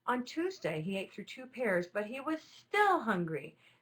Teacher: that word still is the strongest word in the whole sentence